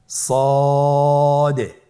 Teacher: সদ হরফটি পুর হরফ। মোটা হরফ উচ্চারণ ক্ষেত্রে মোটা করে পড়তে হবে এবং উচ্চারণ করার সময় তিন আলিফ টেনে পড়তে হবে।